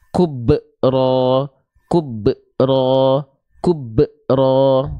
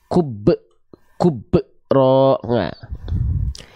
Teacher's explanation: tertahan ya kub kub kalau teman-teman melafalkan pantulannya seperti itu khawatir teman-teman seolah sedang menambah Hamzah sukun setelah ba sukun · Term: pantulan yang tertahan